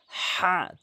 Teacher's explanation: হাটি হচ্ছে হলকের মাঝখান থেকে হলকের মাঝখান থেকে